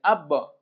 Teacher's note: বা সাকিনে কলকলা, প্রতিধ্বনি সৃষ্টি করে কলকলা